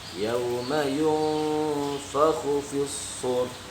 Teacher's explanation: Yauma nah ikhfa, itu namanya ikhfa ya. Nun sukun bertemu dengan selain huruf idhar ya, itu dibacanya berdengung.